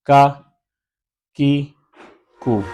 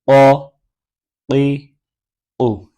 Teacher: کا کی کو یہ باریک پڑھا جائے گا. قا قی او یہ موٹا پڑھا جائے گا